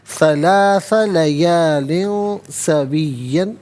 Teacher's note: लयालिन में लाम के नीचे दो ज़ेर की तनवीन है, इसके बाद सीन हरफ इख्फ़ा आ रहा है तो यहाँ तनवीन पर दो ज़ेर की तनवीन पर इख्फ़ा करेंगे। इख्फ़ा कहते हैं नाक में आवाज़ ले जाकर गुनगुनाना। सलासा लयालिन सवियन वक़्फ़ करेंगे तो सविया पढ़ेंगे।